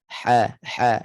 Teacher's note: Makhraj ha di tengah halqum. Ha, sepitkan suara di situ.